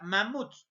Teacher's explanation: en este caso la mayor fuerza de voz está en la última sílaba · la mayor fuerza de voz está en la última sílaba, pero esta última sílaba está terminando en dos consonantes, a pesar de que está terminando en S.